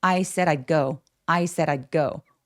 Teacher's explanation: I 할 때 디귿 받침이 아주 가볍게 들리거나 솔직히 없어도 크게 문제되지 않아요